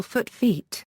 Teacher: a back vowel changes to the associated front vowel